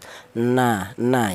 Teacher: Huruf lam ini makhraj makhrajnya huruf atau keluarnya huruf berasal dari ujung lidah menyentuh langit-langit mulut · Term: huruf nun